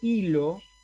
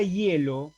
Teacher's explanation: en la palabra hilo, la I es vocal, pero en la palabra hielo es semiconsonante. Es simplemente un sonido para que se apoye la verdadera vocal que hay ahí, que es la E.